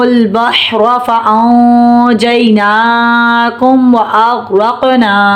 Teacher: قوف پر جزم ہے. قوف میں کلکلا ہوگا